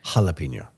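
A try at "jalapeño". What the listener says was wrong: Yeah, which is weird because you never pronounce the J and now you're pronouncing it. Jalapeno, like it's an H.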